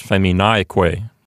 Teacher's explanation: So, for example, if you have the Latin word femini, that's nominative plural, and it means women, and you add the que ending, Q-U-E, it becomes feminique, which now means and women. And so the accent is now on the syllable right before the que